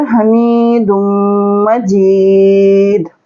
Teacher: यहाँ पे दाल पे कलकला भी करेंगे और दाल को मीम से मिलाएंगे तो मीम पर गुन्ना करेंगे थोड़ी देर